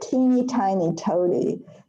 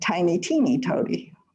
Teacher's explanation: it goes down in the frequency scale of vowels